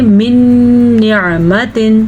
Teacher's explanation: نون ساکن کے بعد نون آیا ہے تو ادغام کے لیے شد پیدا ہو جاتی ہے. تو شد کو ادا کرنے کے لیے غنہ کو ادا کرتے ہیں ہم، کیونکہ وہ غنہ بنتا ہے یا میم واو نون پہ. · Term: ادغام بالغنہ